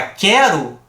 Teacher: a letra u em tese é uma vogal mas quando eu falo a palavra quero alguém consegue escutar o som do fonema u aqui não